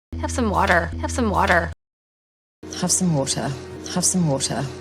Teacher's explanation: cuando una T está entre dos sonidos vocales, se pronuncia como una D o como la R suave de español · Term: la T suave